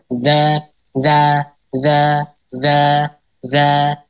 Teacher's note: makhrajnya di ujung lidah bertemu dengan ujung gigi seri atas